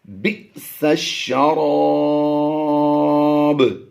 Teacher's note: ہے، بی، با حمزہ زیر بی، جھٹکا دے کر پڑھیں گے، جب بھی حمزہ ساکنہ ہوگا جیسا کہ آپ دیکھ رہے ہیں تو اسے ہم جھٹکا دے کر پڑھتے ہیں